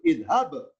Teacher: Pertemuan dua ba berlaku idgham ya, idhab bi kitabi. Ketika ba sukun harus kan qalqalah mantul, idhab. Berhubung ketemu sesama ba, maka tanda sukun nggak berlaku.